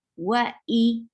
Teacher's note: for Hamza gives a strong sound from your throat, and for Kasra give E sound